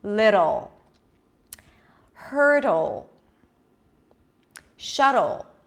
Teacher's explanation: But everyone else, if you hear the dark L, think of it as if there is an O sound. O as in go, but you need to engage the root of the tongue more, okay? So it's not little, it's almost as if you're saying lido, little, little, but you gotta cheat, so you gotta engage the back of the tongue a little bit.